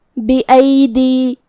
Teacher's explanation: यहाँ दाल के नीचे ज़ेर है, फिर मद्द या है, तो हमें 2 हर्फ के बराबर अपनी आवाज़ लंबी करना है